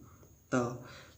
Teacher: त बोलते हैं तो हमारी जीभ थोड़ी सी दांतों में लगती है, दांत को टच करती है